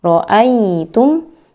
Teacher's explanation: Betul-betul menaikkan pangkat tengah lidah pada huruf ya. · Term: bacaan lin